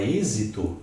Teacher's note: Se eu tiver a palavra êxito, eu modifico o acento porque o timbre é fechado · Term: timbre fechado